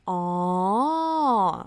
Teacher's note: sound for when you understood something you say oh oh and you have to make it very long like oh like it's just like a wavy you know with the tone up down up and down